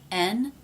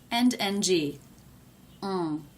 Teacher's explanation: The N sound is made when the front part of the tongue reaches up and touches just behind the front teeth. The NG is made at the back of the mouth. The back part of the tongue reaches up and touches here.